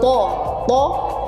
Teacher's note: satu huruf yang dikeluarkan dari ujung lidah mengenai langit-langit depan, kemudian dikeluarkan dengan suara yang tebal